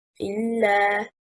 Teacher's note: It is one word. The correct stress is on حركة الهمزة